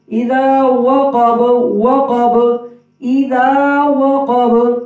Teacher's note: ذال نرم حروف میں سے ہے، زبان کے لوگ اوپر والے دانتوں کی نوک کے ساتھ اذا زا سیٹی کی آواز نہ ہو. اذا وقب، واو میں ہونٹ گول ہوں گے